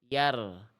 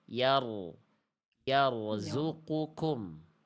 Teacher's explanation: Ro, ro-nya dalam kondisi sukun, kalau ro sukun sebelumnya fathah ro-nya dibaca tebal